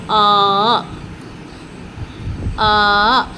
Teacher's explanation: മുകളിൽ ഹംസ് ഇട്ട് ദീർഘചിഹ്നം കൊടുക്കുമ്പോൾ അല്ലെങ്കിൽ ദീർഘ അലിഫ് കൊടുക്കുമ്പോൾ ആ ആ നമ്മൾ മലയാളത്തിൽ ആ എന്ന ഉച്ചാരണം അല്ല തൊണ്ടക്കുഴി എന്ന് വരുന്ന ശബ്ദമായിട്ട് നാവ് പിന്നോട്ടെടുത്തത്